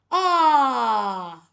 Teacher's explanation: Now there's a vibration because the air has gotten to the vocal cord.